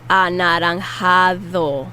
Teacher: And the D is the soft TH sound. For English speakers, it's the most similar to that.